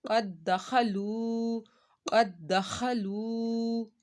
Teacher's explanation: ہم نے یہاں پر لو کو ایک الف کے برابر کھینچ کر پڑھا ہے، وہ مدہ ہو رہا ہے